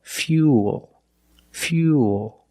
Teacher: We have the same long oo sound after the Y, so it's U, plus the dark L. Fuel. Fuel. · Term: Y sound